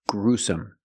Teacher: put the stress on the first syllable